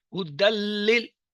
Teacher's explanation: دیکھیں ہدل للمتقین، ہدل یہ تھا ہدن، ہدن جو ہے نون کے ساتھ تھا، ہم اسے ہدن نہیں پڑھ رہے، ہم کیا پڑھتے ہیں ہدل، نون جو ہے غائب، غنہ ہو گیا